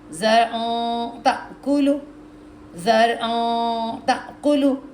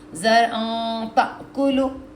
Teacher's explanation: نیچے کے دانتوں سے آپ کی ٹپ آف دی ٹنگ جو ہے نا, نیچے پوری چوڑی زبان نیچے چپک جائے گی, اور ناک آواز دے گا, ناک سے آواز آئے گی. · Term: اخفا غنہ